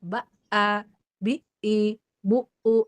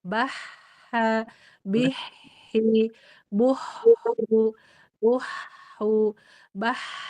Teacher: yang syiddah itu ba'a, bi'i, bu'u, dia tegas, kuat, nggak bisa ngalir